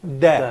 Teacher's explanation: when you pronounce that letter, what you are making here is that you put your tip of the tongue against the alveolar ridge. So what you are making here is da. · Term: Dal